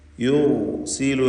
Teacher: യുർസിലു എന്ന് പറയുമ്പോൾ റാഇന് തഫ്ഖീമാണ്. സാക്കിനത്തായ റാ തൊട്ടുമുമ്പിൽ ദം, ഇവിടെ തഫ്ഖീം ചെയ്തുകൊണ്ട് റാഇനെ ഉച്ചരിക്കുക.